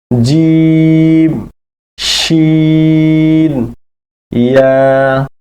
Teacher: 6 number মাখরাজ, জিহ্বার মধ্যখান তার বরাবর উপরের তালুর সঙ্গে লাগাইয়া